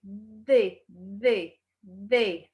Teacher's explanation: A língua, a pontinha da língua fica presa aos dentes.